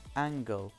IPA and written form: æŋgl (angle)